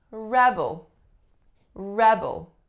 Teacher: as a noun the strongest syllable is the first